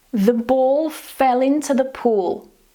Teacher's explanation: with 'fell', is going to change now to a 'Light L' because we have 'fell into', we have a vowel coming after.